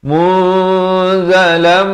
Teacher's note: Munzalam masuk berserta dengung dari munzalan jadi munzalam